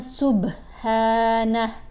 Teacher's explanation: با کے اوپر ہم نے کلکلا کیا